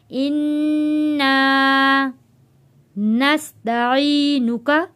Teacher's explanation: اللہم اللہم انا، نون کے اوپر تشدید ہے، یہاں پہ ہم غنہ ادا کریں گے۔ انا، الف سے پہلے زبر ہے، حروف مدہ ہے، اس لیے ہم اس کو ایک الف کے برابر کھینچ کر پڑھ رہے ہیں